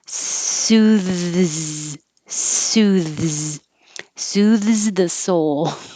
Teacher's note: behind the teeth for the s between the teeth for the th and back behind the teeth for the z